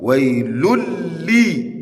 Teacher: It is expected that you assimilate that lamun with shadda into that lamun with tanween. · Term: idgham kamil